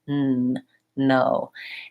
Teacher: when I use an N, my whole tongue touches and it seals off all of the air there. When I say low, it's more just the tip of my tongue, and my tongue is pointier and less of it is touching, but it's in the same spot behind my teeth. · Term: N sound